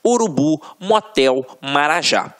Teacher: A última sílaba é a tônica. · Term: oxítonas